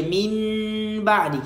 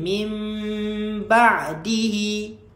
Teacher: Kita tukarkan nun kepada mim. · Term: hukum iqlab